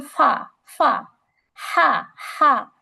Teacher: আস্তে ধাক্কা লাগার কারণে শ্বাসটা জারি থাকে হামসের ক্ষেত্রে